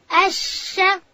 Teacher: شین ادا کېږي د ژبې منځ به لوړ تالو ته ورلو